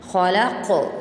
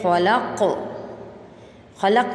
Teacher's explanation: قاف کے اوپر جھٹکا دے کے پڑھیں گے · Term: قلقلہ